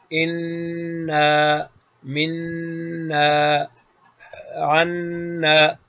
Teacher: اور نون تو ایک نون متحرک پڑھا جاتا ہے فتحہ کسرہ ضمہ کے ساتھ، اور ایک ہے نون کے اوپر تشدید جب ہو تو یہ نقشہ کے مطابق یہ خیشوم یعنی ناک کے بانسے سے نون مشدد کا غنہ ادا ہوتا ہے